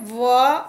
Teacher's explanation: दांत और होठों की सहायता से बोला जाता है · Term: दंतोष्ठ